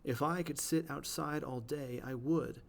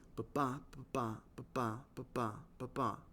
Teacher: unstressed, stressed, over and over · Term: iambic line